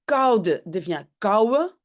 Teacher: Et puis koude devient kouwe, hein, le D on ne prononce pas.